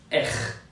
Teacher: R is pronounced R. It comes deep from the throat.